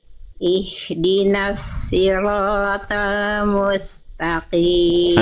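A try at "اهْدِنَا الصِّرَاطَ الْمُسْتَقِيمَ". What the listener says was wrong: pr-nya di huruf Shad berarti ya jadi pangkai lidahnya masih kurang naik masih kurang tebal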